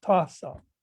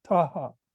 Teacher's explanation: they pronounced the s as an h